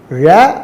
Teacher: ழ அப்படின்னு சொல்லும்போது உங்கள் நுனி நாக்கு உள்நாக்கை தொடும்.